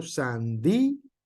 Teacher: Y aunque la palabra sandía también pareciera que tiene por ahí un diptongo, lo que es el acento que lleva en la I hace que se corte el sonido